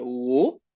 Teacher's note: tono que baja y que sube. Primero va hacia abajo y luego sube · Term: tono tres